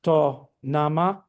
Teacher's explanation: The determiners assign a low-high melody. So nama, in this case, becomes to, nama, low-high.